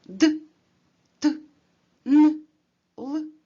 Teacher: вимовляємо шляхом притискання кінчика язика до верхніх зубів